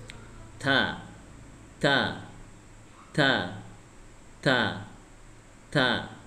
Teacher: lidah yang bagian atas itu menyentuh gigi atas bagian dalam ya ujung lidah menyentuh gigi atas bagian di bagian dalam · Ya, ujung lidah menyentuh gigi atas bagian dalam.